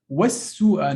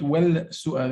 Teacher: So we avoid the pronunciation of lam here, right? Because sin merged with the al. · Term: harf shamsi